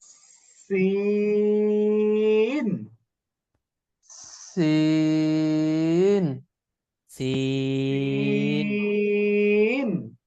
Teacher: সিন গুলো পাশ কেটে যাবে, আওয়াজটা চিকন হবে